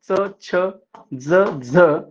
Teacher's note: टाळूला जिभेचा स्पर्श होऊन उच्चारल्या जाणाऱ्या वर्णांना तालव्य वर्ण असे म्हणतात